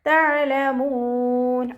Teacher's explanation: ഐനിൻ്റെ മഖ്റജ് വസത്തുൽ ഹൽക്ക്, തൊണ്ടയുടെ മധ്യഭാഗം, സൗണ്ട് ക്ലിയർ ആക്കി കൊടുക്കുക. അവസാനത്തിൽ മദ് ആറ് സുക്കൂനിൽ വഖഫ് ചെയ്യുമ്പോൾ ഈ വാവ് മദ്ദിനെ നമുക്ക് 2, 4, 6 കൗണ്ട് വീതം നീട്ടി വഖഫ് ചെയ്യാം.